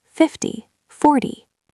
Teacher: And for the ty numbers, 30 40 50, the stress is on the first syllable